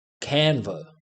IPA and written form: ˈkæn.və (Canva)